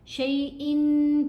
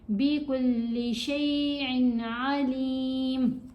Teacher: تنوین ہے، اس کے بعد حرف حلقی ہے عین، تو ہم نے غنہ نہیں کرنا. شیئن پڑھیں گے تو غلط ہو جائے گا.